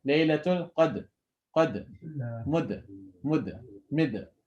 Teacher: You should not make any haraka. All three of these should sound exactly the same. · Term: qalqala